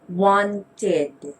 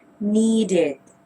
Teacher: the ed ending sound should sound with an id